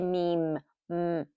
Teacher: If you hold it just a little bit, automatically the nasal sound comes out. If we say me, see the nasal sound is coming.